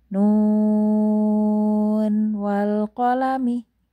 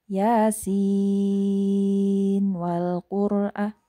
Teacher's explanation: Jadi nun ini diidharkan. Nunnya dibaca 6 harokat tentunya karena di situ ada benderanya. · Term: izhar